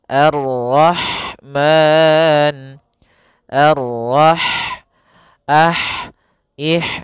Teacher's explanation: arahmanu arro rnya tebal kemudian di sini ada huruf ha ha Dia memiliki sifat Hames yaitu maka harus mengalirnya nafas